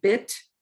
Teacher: bit, which is also high front like beat, but it's lax. So there's a little dotted line there.